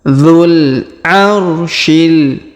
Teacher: Perhatikan huruf dzu kita langsung sambung ke huruf alif lam qamariyah, sedangkan wawunya tidak dibaca. Dzul langsung ya.